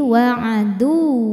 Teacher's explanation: ini pakai naber, naikkan intonasi suara kita, jangan ditahan